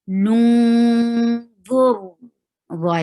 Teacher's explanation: Wa qu, lun, this lam is attached with noon, and it has ikhfa. You are hiding the sound of noon and keeping it in your nose and going towards the makhraj of dha. Noon, dha is heavy.